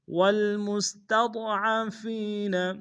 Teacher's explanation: ضاد کو موٹا ادا کریں گے · فی سبیل اللہ والمستضعفین، میم کو سین کے سامنے لانا ہے، سین کی سیٹی باریک ہوگی